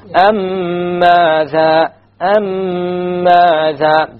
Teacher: There will be a ghunna on the meme.